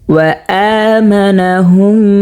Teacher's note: ওয়াআমানাহুম এখানে গুন্না করতে হবে, মিম সাকিনের বামে মিম আসছে